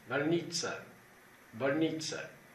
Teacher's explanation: o O, quando ele é átono, ele é pronunciado quase como se fosse um A